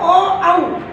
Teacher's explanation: ये कंठ और ओष्ठ दोनों से बोले जाते हैं, तो इसका उच्चारण स्थान हो गया कंठोष्ठ।